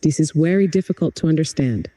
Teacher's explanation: tenta dar um toque mais musical na entonação, como se sua voz subisse um pouquinho no very e depois descesse em understand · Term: sotaque indiano